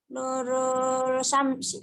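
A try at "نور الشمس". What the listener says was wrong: alif lamnya samsia, nurush gitu ya.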